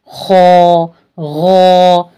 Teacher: जाने वाले र्फ है ठीक है भारीपन इसमें लाएंगे ख ग जबान ऊपर उठ गई यानी ये मोटा पढ़ा जाने वाला हुरूफ है